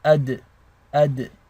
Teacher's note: The dal is one of the letters of qalqala. This means there is an echo when you have a sukun on top. So it's ad, ad.